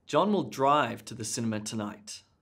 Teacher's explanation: with the emphasis being on drive he's going to drive not walk